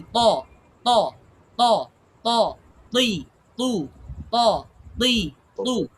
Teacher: জিহ্বার আগা, সামনের উপরের দুই দাঁতের গোড়া, এই যে লাগাইয়া জোরে ধাক্কা দিতেছি আমি। এই ধাক্কাটার কারণে এটা এমনিতেই এই সাউন্ডটা আসতেছে, বাড়ি খাইতেছে, শক্ত হইতেছে, হ্যাঁ, কলকলা হইতেছে, সবকিছু এই বাড়িটা দেওয়ার কারণে, বুঝছেন?